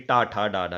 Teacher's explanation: आप जब टा बोलेंगे तो आपकी जीभ मुड़ के आपके मुंह के ऊपरी छत पे, जिसे मूर्धा कहा जाता है, वहां पे टच होती है। मोड़ के जीभ मुड़ के टच होती है, टा, ठा, डा, डा।